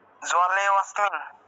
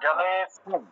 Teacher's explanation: জালে, লেতে গিয়ে টান দিয়ে তারপরে স্মিন উচ্চারণ করতে হবে। লেতে গিয়ে একটু টান দিয়ে স্মিন উচ্চারণ করতে হবে।